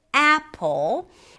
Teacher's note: But if we take the word apple, we here have 2 syllables. The first one, a, is the primary stress, longer, louder, higher in pitch, apple. And the second syllable is a weak stress.